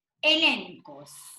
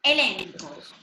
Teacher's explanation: Porque la gamma delante de la chi se pronuncia como una N.